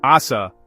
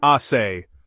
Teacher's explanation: The only difference is the light S versus the heavy S.